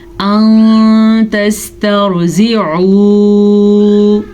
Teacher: نون ساکن کے بعد تا ہے جو کہ حروف اخفا میں سے ہے، تو ہم نے یہاں پہ نون کو چھپا کے غننے کے ساتھ پڑھا ہے